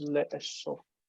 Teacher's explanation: It's an echo vowel. It's echoing that first vowel.